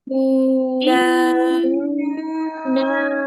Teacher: প্রথমে গুন্না হবে ওয়াজিব গুন্না তারপরে টান হবে